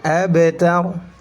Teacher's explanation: ba-nya dipantulkan karena memiliki sifat qalqalah